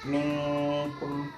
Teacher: ada nun mati bertemu dengan huruf kaf. Nah, maka cara bacanya adalah antara gunnah dan izhar, maka dibaca minkum, seperti itu. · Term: ikhfa